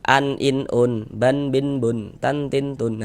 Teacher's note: tanwin itu di ujungnya itu di akhirnya itu ada huruf nun sukunnya yang tampak yang kelihatan kalau kita ucapkan saja. Tapi dia dari segi tulisan tidak tampak.